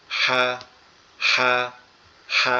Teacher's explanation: এটা বডির সাথে যে অংশটা লেগে আছে এটাকে বলা হয় শুরু, এরপরে উঁচু হাড় যেখানে আছে এটাকে বলা হয় মধ্যকান, এরপরে গলার সাথে যে অংশটা লেগে আছে এটাকে বলা হয় শেষ। তো এই হাটা হচ্ছে গলার মধ্যখান থেকে উচ্চারিত হবে একটু ফ্যাঁসফ্যাঁসানি আওয়াজে।